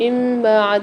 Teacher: نون ساکن کے بعد با آ رہی ہے، اس کو چھوٹی سی میم سے ملا کر نون ساکن کو غنہ کر کے پڑھیں گے، قاعدے کا نام ہے اقلاب۔